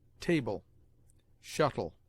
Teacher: The Saxons, who delighted in guttural sounds, sometimes aspirated the L at the beginning of words, as HLAF, a loaf, or bread, HLAFORD, a lord, but this pronunciation is now disused. LE at the end of words is pronounced like a weak EL, in which the E is almost mute